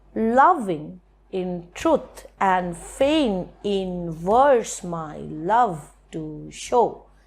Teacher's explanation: The main word in the root part of the word loving is love, so we are giving accent on love.